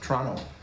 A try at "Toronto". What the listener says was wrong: Canadians don't pronounce the T.